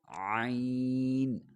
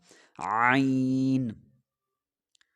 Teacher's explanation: حلق سے نکالیں گے لیکن زور لگائیں گے، حلق کے اوپر زور دیں گے تھوڑا سا